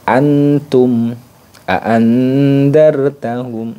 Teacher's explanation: bunyi n sukunnya lebih jelas karena letak ta th Dal ini lebih dekat dengan nunnya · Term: ikhfa akrab, ikhfa akrob